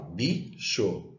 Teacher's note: se é bicho, bi é mais forte que xô. Então, bi é a sílaba tônica.